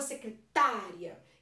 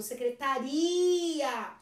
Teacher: Então o tá é mais forte.